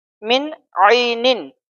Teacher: ساکن ہے ہم یہاں پہ اخفا نہیں کریں گے، کیوں؟ کیونکہ نون ساکن کے بعد حروف حلقی عین ہے، حروف حلقی آ جائے تو وہاں پہ اظہار ہوگا